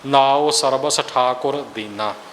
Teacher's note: ਇਥੇ ਆਪਣੇ ਕੋਲੋਂ ਟਿੱਪੀ ਨਹੀਂ ਲਾਉਣੀ ਸਰਬੰਸ ਨਹੀਂ ਕਰਨਾ ਅਧਕ ਲਾ ਕੇ ਸਰਬਸ ਵੀ ਨਹੀਂ ਕਰਨਾ ਤੇ ਸਰਬ ਸੋ ਵੱਖਰਾ ਵੱਖਰਾ ਵੀ ਨਹੀਂ ਕਰਨਾ ਸਰਬਸ ਇਉ ਬੋਲਣਾ